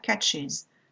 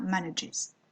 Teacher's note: Le S de la troisième personne va se prononcer is, après les sons S, Ch, Z et J.